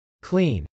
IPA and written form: klˈin (clean)